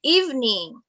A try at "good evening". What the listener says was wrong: huruf E ini dibacanya I. Evening, bukan evening ya.